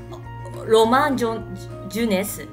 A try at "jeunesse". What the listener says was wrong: Jeunesse. Alors ici, c'est un peu... Faites attention. D'habitude, vous prononcez bien. Là, essayez de faire attention. Je. C'est pas du. Voilà. Je. Jeunesse.